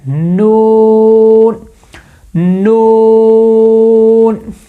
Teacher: جو زبان کی نوک ہے، یہ اوپر والے جو سامنے جو 4 دانت ہیں، 2 دانت ایک ادھر ایک ادھر، 4 دانتوں کے جو مسوڑے ہیں نا، وہاں پہ زبان کی نوک لگے